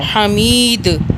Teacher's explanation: دال پہ ہم نے طاقت سے پڑھنا ہے کیونکہ دال قلقلہ کا حرف ہے